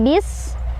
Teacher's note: Sinnya dia punya sifat hamas, jadi kita alirin anginnya bis. Dan juga ada desisan ya, punya sifat sofir. Jadi kayak suara desisan ular gitu ya.